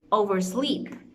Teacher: the stress or the emphasis is going to be in the second component which is sleep